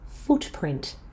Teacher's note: In compound nouns like footprint, the first part has the most stress.